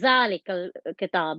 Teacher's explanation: a lot of vibration and my teeth are aligned together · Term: z sound